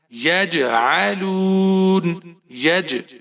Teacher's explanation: اب یہ حروف قلقلہ میں سے ہے اور یہ ساکن ہے، جزم ہے اس کے اوپر، تو قلقلہ خوب ظاہر کر کے آپ نے پڑھنا ہے۔ یج، جنبش دینی ہے، آپ کی آواز میں جنبش ہونی چاہیے۔